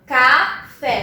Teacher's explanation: A minha sílaba mais forte é o fé. Então, ela é uma oxítona.